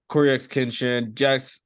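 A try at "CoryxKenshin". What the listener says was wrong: Does he pronounce the X? I thought it was just Corey Kenshin.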